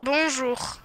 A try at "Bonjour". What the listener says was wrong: Yeah, you hawking up a loogie at the end there. Say it again.